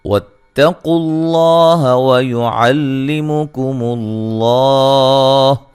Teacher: لفظ اللہ کو موٹا ادا کریں گے اس سے پہلے پیش ہے